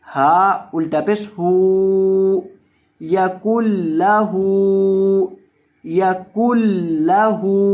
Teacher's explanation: تو دیکھیں جب اس کے توڑ جوڑ کریں گے یا اس کو رواں پڑھیں گے، دونوں طرح ہی کاف کو ہم نے سیدھا لام کے ساتھ ملا دینا ہے، یہ جو درمیان میں نون ہے اس کو نہیں پڑھنا۔ کاف پیش لام کل، یا کل لام زبر لا، یا کل لا، ہا الٹا پیش ہو، یا کل لہو، یا کل لہو، اور ہا کو لمبا کر کے پڑھنا ہے کیونکہ ہا کے اوپر الٹا پیش ہے۔